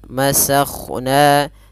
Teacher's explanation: Di sini ada huruf kha yang sukun, maka dia huruf kha tebal. Masakhna. Kemudian lafal na tipis, dan pada lafal na sendiri ada hukum tajwid berupa mad tabi'i, yaitu adanya fathah bertemu dengan huruf mad berupa alif, panjangnya 2 harokat.